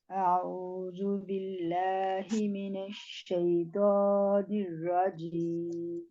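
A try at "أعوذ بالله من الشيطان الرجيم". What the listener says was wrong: من الشیطان، تو کے اوپر صرف کھڑا زبر ہے. ہم نے اس کو کتنی حرکات دینی ہے؟ 2 کاؤنٹس ہیں، آپ نے 3.5 دی ہیں.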